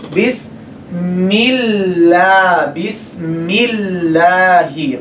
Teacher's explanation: when this lam is preceded by kasra, then we make this lam light.